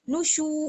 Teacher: واو مدہ ہے اس لیے شین کو واو کے ساتھ ملاتے ہوئے ہلکا سا تھوڑا سا کھینچیں گے بس